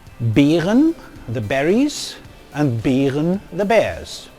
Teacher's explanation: So, as already said, there are 7 long monophthongs, or 8, depending on whether the 2 front vowels e and ä have merged. Most speakers, especially those who use the northern accents of German like myself, merge these 2 vowels everywhere. For example, in words such as Beeren, the berries, and Bären, the bears, which are now homophones.